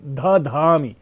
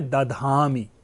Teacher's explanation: ध में ह है, इसलिए ध को द होने से ह ध्वनि का लोप हो जाता है, ह ध्वनि हट जाती है।